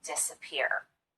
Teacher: An example of secondary stress would be the first syllable in this word, disappear. We do spend some time on this syllable, and we do make the vowel louder and longer, but not quite as much as we do on this last syllable, the third syllable, peer.